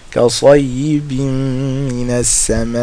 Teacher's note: fatha followed by alif, so it's 2 harakas. Immediately after that followed by hamza, so now it's 4 or 5 harakas